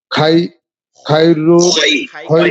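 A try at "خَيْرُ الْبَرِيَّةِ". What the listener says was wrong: খাই কেন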